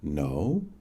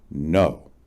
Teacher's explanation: No, spoken with a rising inflection, no, with a downward inflection, no, and with no inflection, no, all mean, according to the dictionary, a denial, a refusal, negative.